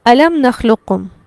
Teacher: قاف کے پڑھنے میں قاف کو پر تو کریں گے لیکن اس پر قلقلہ نہیں کریں گے. ہم ایسے نہیں پڑھیں گے نخلقکم، لقکم ایسے نہیں پڑھیں گے. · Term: ناقص